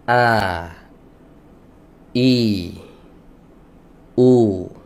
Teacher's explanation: ketika dia berharakat pita suaranya ter terbuka a i u jadi cara mengeluarkan huruf hamzah itu pita suaranya dibuka asalnya nutup asalnya sebelum diberi harakat dia nutup dulu ketika dia diberi harakat